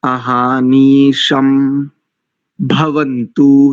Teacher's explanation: जो महाप्राण वाले वर्ण हैं उनको महाप्राण से बोलना चाहिए, जैसे अहानिशम भवन्तु, ये जो भा है ये महाप्राण प्रयत्न वाला है जी।